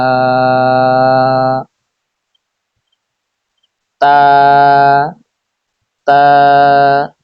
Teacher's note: জিহ্বার আগা সামনের উপরের দুই দাঁতের গোড়ার সঙ্গে লাগিয়ে উচ্চারিত হয় তা